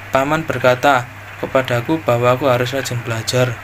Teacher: Intonasi yang digunakan kalimat tidak langsung yaitu datar dan terkesan menurun pada bagian akhir kalimat.